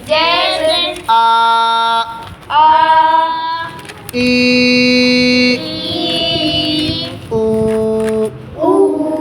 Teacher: یہ تینوں حرف مدہ بن جائیں گے، ایک الف کے برابر کھینچ کر پڑھے جائیں گے، جیسے آ، ای، او، ان کو ایک الف کھینچ کر پڑھیں گے۔